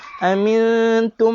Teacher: jumpa mim bersabdu dengung sahaja 2 harakat. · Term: idgham mithlain